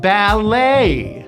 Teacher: we do not pronounce the t it is simply the a sound which you have to shape a and the stress is on the second syllable ballet everything